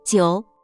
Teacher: Third tone. Your voice dips down and up.